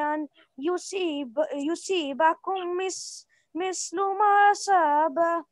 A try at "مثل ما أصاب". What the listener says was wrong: ما أصاب don't skip همزة فتحة مثل ما أصاب قوم